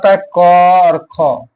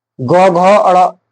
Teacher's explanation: प्रत्येक वर्ग का प्रथम और दूसरा वर्ण अघोष वर्ण कहलाता है